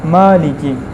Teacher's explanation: مالکی ناک میں آواز نہ جائے. مالکی ناک میں آواز نہ ہو جائے.